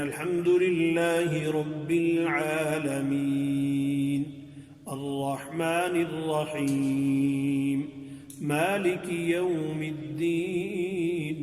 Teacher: تو اب اس کو الحمدللہ رب العالمین الرحمن یہ نہیں پڑھیں گے غلط ہو جائے گا. تو یہ مد عارض وقفی کہلاتی ہے کہ اس پر جب ساکن حالت ہوگی اس کی سکون کریں گے وقف کی وجہ سے تو اس پر مد کریں گے. اگر سکون نہیں کریں گے ملا کے پڑھیں گے یعنی ٹھہریں گے نہیں ملا کے پڑھیں گے تو یہ مد نہیں ہوگی.